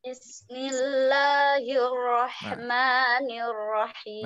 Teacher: milnya tidak terlalu ditekan ya, tapi sekilas saja karena dia memang sifatnya mengalir tapi tidak terlalu didengungkan, ditahan.